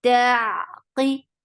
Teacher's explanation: Qaf is heavy, and for kasra give e sound. The sound is very short.